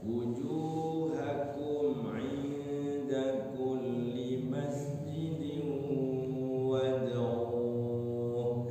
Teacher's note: Kumnya jangan ditahan. Wujuhakum langsung. Inda baru ditahan ikhfa ya.